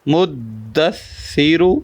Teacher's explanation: سا بغیر سیٹی کے ادا کرنا ہے